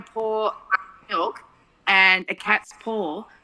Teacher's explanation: if we say I'm going to pour milk and a cat's paw, for us that sounds the same.